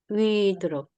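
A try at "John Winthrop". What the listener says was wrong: 네, 윈드롭이죠. WIN이니까 윈드롭. TH 발음, 번데기 발음해서 윈드롭 이렇게 발음하시면 되고요.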